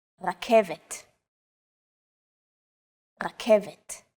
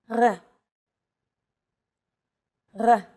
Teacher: It's often written as an R, but don't be fooled. This letter is pronounced differently than an English R. It's pronounced at the back of the throat instead of forward in the mouth.